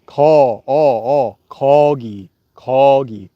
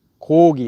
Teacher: If your lips are open and you say call, corgi, corgi. If you make your lips round, corgi.